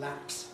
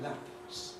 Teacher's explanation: If we mean a little ʰ sound, a puff of breath, then, well there isn't one in ‘lapse’ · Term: unaspirated